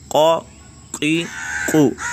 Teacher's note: زبان کی جڑ اور تالو کا نرم حصہ، یہاں سے کیا قاف منقوطہ ادا ہوتا ہے